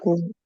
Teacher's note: Q का sound Ko. क और व मिलाकर आ रहा है ना, ठीक Ko.